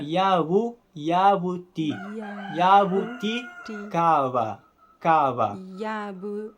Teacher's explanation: também não tem som de J exatamente então é na verdade o b do Tupi é um B fricativo Ele é igual ao B do espanhol Em certas ocasiões e é um B onde você não encosta · Ele é igual ao B do espanhol, em certas ocasiões. É um B onde você não encosta os lábios. Você só fricciona eles de leve.